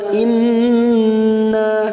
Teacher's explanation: Nun yang bertasdid gunna musyaddadah kita tekan tiga ketuk atau tiga harakat in nanya kita panjangkan dua harakat karena ada fathah diikuti Alif